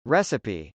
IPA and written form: rˈɛsəpi (recipe)